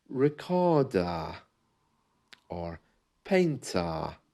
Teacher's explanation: you can hear there that the letter R is really being replaced with an A